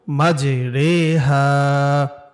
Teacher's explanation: এখানে পুরো কোরআন শরীফের মাঝে এই একটা শব্দ আছে যে র খারাজের রি হয় না, বরং র খারাজের রে হয়, রে একারের মতো। তাহলে আমরা এটা এভাবে পড়ব, মাঝে রে হা।